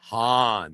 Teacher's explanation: pronounce Han with a breathy H instead of a hard K